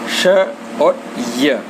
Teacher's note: मुंह के भीतर की छत का जो अगला भाग है उससे हमारी जीभ स्पर्श करती है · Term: तालव्य